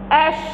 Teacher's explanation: ستلاحظ انتشار صوت حرف الشين في الفم. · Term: صفة التفشي